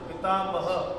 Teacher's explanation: विसर्ग लागलाय त्याच्यात अह उच्चारण येणार